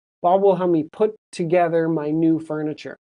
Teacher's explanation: Put together those two T's stick together.